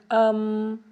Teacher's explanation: میم دونوں ہونٹوں کے خشک حصے سے اطباق شفتین یعنی خشک حصہ، اطباق شفتین۔